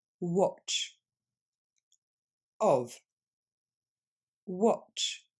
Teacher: Vous vous débarrassez du son A et vous allez le remplacer par le son O de of.